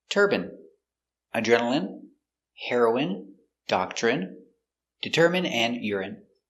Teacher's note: all of these words are pronounced with the in sound for the INE